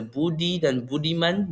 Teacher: letupan lembut seperti B dalam kata budi dan budiman menambah penegasan tanpa menjejaskan kelembutan bunyi